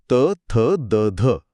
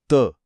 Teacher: इथे जिभेचा शेंडा थेट दातांच्या मागच्या बाजूला लागतो.